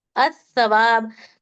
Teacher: लाम को नहीं पढ़ेंगे, डायरेक्ट अलीफ से स को मिला देंगे और अस्सवाब पढ़ेंगे। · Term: हुरूफ शमसी